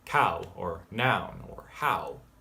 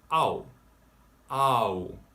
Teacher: This is an ah into an oo sound. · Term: AW